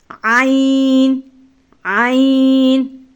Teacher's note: ہا اور عین حلق کے درمیانی حصے سے ادا ہوتے ہیں۔